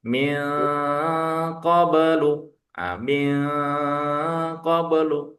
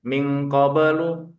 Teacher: Kalau yang terakhir adalah ikfa hakiki. Samar dan mendengung. Nah, mendengungnya juga tiga harakat ditahannya. · min qoblu itu ditahan nun ketemu qof